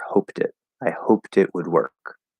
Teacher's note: because normally when t connects over it becomes a d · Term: linking rule